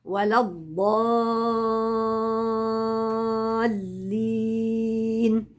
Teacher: مد لازم ست حركات عندي الف ماديه وجاي وراها حرف مشدد اللي هو اللام الحرف المشدد يبقى بدايته شد سكون ثم